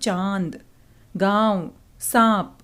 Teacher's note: मुंह और नाक दोनों से ही उच्चारण का हम प्रयोग कर रहे हैं। ध्वनि मुंह से ज़्यादा निकल रही है और नाक से कम निकल रही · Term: अनुनासिक